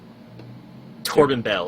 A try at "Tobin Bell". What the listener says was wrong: Tobin Bell, not Torben.